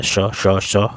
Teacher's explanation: देखिए हवा इसमें मोटी और ज़्यादा लग रही है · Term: महाप्राण